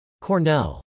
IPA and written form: kɔːrnˈɛl (cornell)